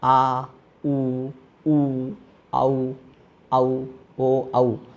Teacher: उच्चारण करने पर जीभ का पीछे वाला भाग ऊपर उठता है। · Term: पच्च स्वर